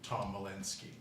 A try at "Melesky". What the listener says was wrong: Melesky, no N.